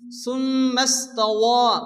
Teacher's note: মিমের পর তাসদীদ মিম গুণ ওয়াজিব